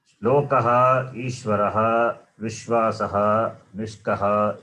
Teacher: In all these words, Visarga is preceded by the letter A. Therefore, Visarga takes the sound of the vowel A.